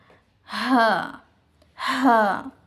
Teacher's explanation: ہا کا جو ہے مخرج حلق کے سینے کی طرف والے حصے سے ادا ہوتے ہیں